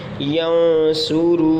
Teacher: वाव से पहले पेश है तो वाव मद्दा, इसको एक अलिफ तक खींच कर पढ़ेंगे। यंसुरू नून ज़बर न यंसुरून मीम नून ज़बर मन दौद वाव पेश दू मदू दाल दो ज़ेर दिन मदूदिन।